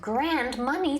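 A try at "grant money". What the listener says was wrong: Not grand money. No, you said grand, as in big.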